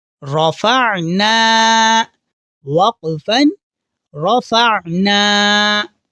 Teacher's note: تو یہاں را کے اوپر زبر ہے تو را کو ہم موٹا یعنی منہ پر کر کے پڑھیں گے